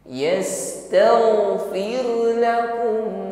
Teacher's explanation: tidak boleh dipantulkan yastagfir yastagfir bukan dipantulkan alirkan saja yastag yastagfirakum ro sukun yang sebelumnya ada kasrah ya maka diringankan bunyi getaran rnya bukan ditebalkan bukan yastagfir bukan menebal ya tapi tipis yastagfirlakum [Musik] Rasulullah wau